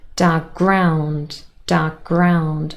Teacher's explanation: k and g are formed in the same place they're both plosives one is unvoiced the other one voiced · So dark ground said fast together become dark ground, dark ground. So the k is lost and we only say g.